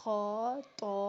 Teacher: خا کی ادائیگی میں یہ ہے کہ ہمارے ہونٹ گول نہیں ہونے چاہیے، کیونکہ ہونٹ جو ہیں وہ واؤ کا مخرج آ جاتا ہے اس میں، اور واؤ کے ملاوٹ سے ہمارے حروف کی ادائیگی غلط ہو جائے گی، ٹھیک ہے۔ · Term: موٹے حروف